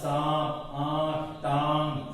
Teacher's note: जिन वर्ण पर चंद्र बिंदु लगा रहा था हमने, उच्चारण में हवा, नाक, मुंह दोनों से बाहर निकलती है, उन्हें चंद्र बिंदु या अनुनासिक भी बोलते हैं